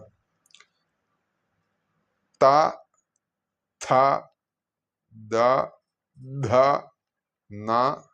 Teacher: ഇത് പല്ല് ചേർത്ത് ഉച്ചരിക്കേണ്ട ശബ്ദങ്ങളായതിനാൽ ഇതിന് ദന്ത്യങ്ങൾ അല്ലെങ്കിൽ ഡെൻഡൽസ്, ദന്ത്യശബ്ദങ്ങൾ എന്നാണ് പറയുക.